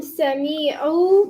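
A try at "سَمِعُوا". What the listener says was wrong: The me was too long again.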